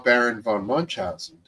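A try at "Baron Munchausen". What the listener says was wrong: It's just it's not Baron von Munch. It's just Baron Munch. No, there's no Von. There's no Von.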